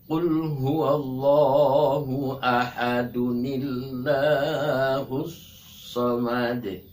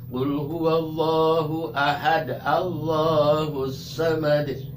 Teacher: kalau kita mau mewasol ayat 1 ke ayat 2 ya, kita harus pakai nun. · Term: diwasol